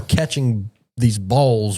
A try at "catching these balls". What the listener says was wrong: Catching the balls. Why you say it so hard? Catching these balls.